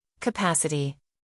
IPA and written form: kəˈpæs.ɪ.ti (Capacity)